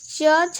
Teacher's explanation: च छ जो है वो तालु से, किससे? तालु से।